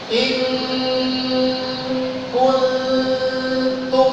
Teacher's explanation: Kalau kaf, ketemunya kaf, maka makhrajnya di kaf juga. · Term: ikhfa